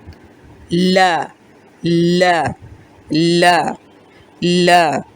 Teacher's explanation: تو دیکھیں جب ہم نے ضاد کا مخرج پڑھا تھا تو پچھلے کنارے لگ رہے تھے، اور لام کے مخرج میں اگلے کنارے، صرف نوک نہیں بلکہ اس کے کنارے بھی جا کے اوپر لگ رہے ہیں۔ حمزہ زبر لام ال، ال، لا، لا، لا، لا۔